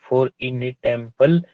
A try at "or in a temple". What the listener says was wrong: आपने बोला फोर इन अ टेम्पल और इन अ टेम्पल, ध्यान से।